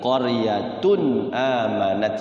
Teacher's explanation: Hati-hati qaryatunnya itu bertemu alif, bertemu hamzah. Jadi jangan ditahan. Idhar halqi.